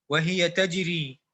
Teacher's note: تجری میں کیا کریں گے؟ ترقیق کریں گے، را کو باریک پڑھیں گے کیونکہ را مکسورہ ہے